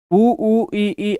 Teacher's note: संवृत इसके अंदर जो मुख है वह बिल्कुल पूरा बंद होगा। ठीक है? लगभग बंद होगा। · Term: संवृत स्वर